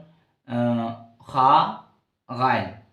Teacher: আদনায় হলক, কণ্ঠনালীর উপরে অংশ যা মুখের নিকটবর্তী